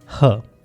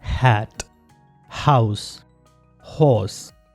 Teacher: तो ग्लोटिस से जो साउंड प्रोड्यूस होगा उसे हम ग्लोटल साउंड कहेंगे। वोकल कॉर्ड्स एक दूसरे के करीब आते हैं और उसमें से साउंड फ्रिक्शन से प्रोड्यूस होती है और ये एक ही साउंड है ह, as in हैट, हाउस, हॉर्स।